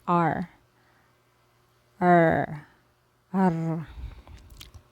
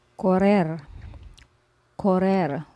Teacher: this one is Double R so we pronounce this with a roll of the tongue this is hard r r okay for example corre correl which